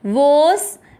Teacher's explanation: आपको वो की मात्रा को लंबा खींचना है, वोस, फिर आधा त अलग रहेगा, व पे ई की मात्रा त्वी, त्वी के साथ आधा षटकोण वाला त्विश और ट में अ मिक्स करेंगे, त्विष्ट।